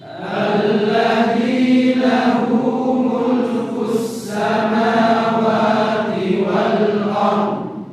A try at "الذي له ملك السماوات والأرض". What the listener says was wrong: Hati-hati pula dotnya hilang, jangan sampai hilang. Wal ar dotnya tidak ada. Dot itu ada suaranya, ya. Ya, dari sisi lidah. Ya, selain ra-nya, ya ini pengucapan ard ini agak berbeda, ya. Jadi butuh latihan memang.